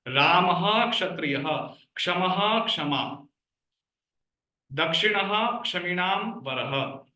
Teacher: the Visargaha should not be pronounced as Jivvamulya. But Visarga will be pronounced fully.